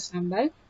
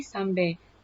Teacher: Sementara itu, bagi dialek Perak Tengah pula, varian leksikal yang tersendiri iaitu bunyi A di akhir suku kata berubah menjadi E